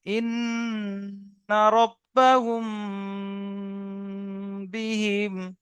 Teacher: মিম সাকিনের পরে বা এলে একালি পরিমাণ গুণনা করে পড়তে হবে, একে ইকফায়ে স্বাভাবিক বলে